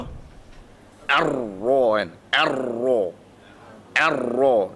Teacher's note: makhraj dia sama kan sifat dia yang berbeza adalah ro mati ro dia Memang hujung Lidah cuma dia akan bergetar ke depan